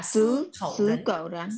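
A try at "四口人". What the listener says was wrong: Sư nhá, sư. Đừng đọc là cậu nhá, nếu cậu thì thành con chó rồi đấy, nên là phải đọc bật hơi lên khẩu. Khẩu nhá, sư khẩu rắn. Khẩu rắn.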